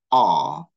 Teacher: when you produce aw, okay, you retract the position of your tongue. You move back the position of your tongue. Okay, so we describe here as positive back.